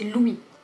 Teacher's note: On ne prononce pas le S, c'est Louis.